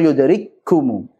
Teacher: Yang ada hamasnya pada kaf yang kedua saja. Ku. Tapi itu pun tidak terlalu jelas sebagaimana saat sukun.